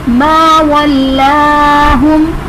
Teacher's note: मीम मुशद्दद है तो मीम मुशद्दद में हम गुन्ना करेंगे